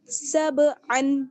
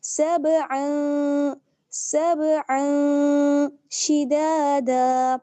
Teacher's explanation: تنوین کی آواز کو صاف نہ پڑھ کے آواز کو ہم چھپا لیں گے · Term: اخفا